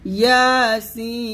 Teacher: ইয়া এক লিফ টান দিয়ে সিনে চার লিফ টান দিবেন, ইয়াসিন।